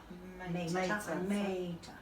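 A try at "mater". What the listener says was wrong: or martyr. Technically, it's the long A. Martyr.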